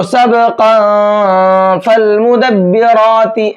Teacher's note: تنوین کی آواز کو تھوڑی دیر پھر ناک میں چھپاتے ہیں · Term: اخفا